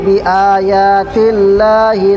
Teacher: बिआयातिल्लाह में लफ्ज़ अल्लाह के लाम से पहले ज़ेर आ रहा है, इसलिए लफ्ज़ अल्लाह के लाम को बारीक पढ़ेंगे